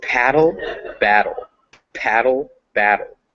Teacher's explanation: those two words paddle and battle they sound exactly the same except one has a p and the other has a b